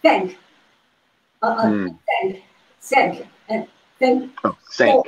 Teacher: So my TH sound and S is the same.